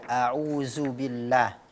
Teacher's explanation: saat melafalkan Audzubillah huruf dzal dibaca menjadi Zai